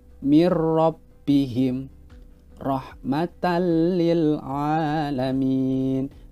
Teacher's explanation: Pada kata mirrabbihim, kita tetap memasukkan nun sukun ini ke huruf ro-nya. · Di dalam tajwid, ketika ada nun sukun ataupun tanwin yang bertemu dengan salah satu huruf lam ataupun ro, maka harus dibaca memasukkan tetapi tidak didengungkan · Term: idhom bilahunah